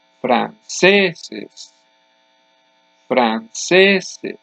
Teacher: The next to last syllable is the loudest. I do not say franceses.